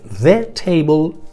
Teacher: La primera pronunciación es la que todos sabemos que es the, ¿vale? Bien, este es un artículo que al pronunciarlo es una palabra que no va acentuada